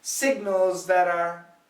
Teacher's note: flat T sounds like a D